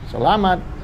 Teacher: Accent is on the middle syllable.